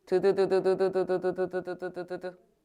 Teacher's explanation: 드가 발음될 때랑 이가 발음될 때랑 혀가 어떻게 되는지 한번 잘 생각해봐. 드가 발음될 때 혀가 약간 앞으로 더 나와 있지. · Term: 잇몸 소리